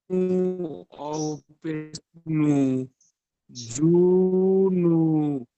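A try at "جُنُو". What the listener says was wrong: না, জিমটা টান হবে না, জুনু। ডাল পেশ দু, জুনু দু। হা উল্টা পেশ হু, জুনু দুহু।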